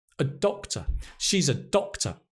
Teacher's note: You can hear the stress on the doctor.